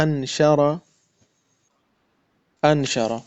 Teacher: نون ادا ہوتا ہے جب آپ کی زبان کا جو زبان کی نوک جو ہے وہ اوپر کے تالو کے ساتھ لگے